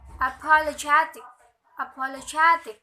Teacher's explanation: the pattern unstressed unstressed unstressed primary unstressed